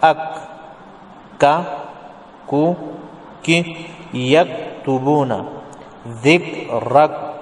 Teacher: یہ قاف کے مخرج کے ساتھ متصل ہی منہ کی جانب جب آپ جائیں گے تو زبان جو ہے اس کا آخری حصہ جو ہے وہ اوپر کے تالو سے لگے تو کاف ادا ہوتا ہے۔ تقریباً قاف ہی کا ہے، لیکن اتنی بات ہے کہ تھوڑا منہ کی طرف آپ آ جائیں گے۔ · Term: کاف کا مخرج